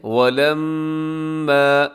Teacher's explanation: اس آیت مبارکہ کا پہلا لفظ کیا ہے؟ وَلَمَّا، میم کے اوپر شد ہے تو آپ غنہ کر دیجیے گا، آواز کو ناک میں رکھیے گا